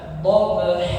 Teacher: ketika berhenti waqaf ya berhenti maka dibaca dobha dua harakat ya. Jangan terlalu pendek, jangan dobha atau terlalu panjang.